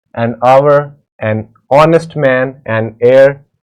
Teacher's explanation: the words hour, honest, heir begin with a vowel sound as the initial consonant H is not pronounced